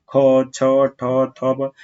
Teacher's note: जब आप बोलेंगे ना तो साउंड आपका जो वायु है वो आपके हथेली पे बहुत तेज से टकराएगा। ठीक है, और आप समझ जाएंगे कि वो महाप्राण है।